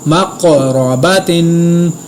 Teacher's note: میم زبر قاف مقو، را زبر را، مقرا، با زبر با، مقربا، تا دو زیر تن، مقرباتن۔ قاف کو پر ادا کیا، قلقلہ بھی کیا، را کو پر ادا کیا